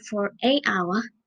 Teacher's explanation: hour starts with H, which is a consonant, but in this word, H is silent